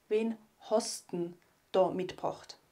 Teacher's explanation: denn wird reduziert auf ein N und dieses n wird dann an Host angehängt